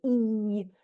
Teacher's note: Something like an e, your tongue is high and front